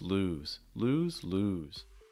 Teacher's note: going up on the first lose and going down on the second lose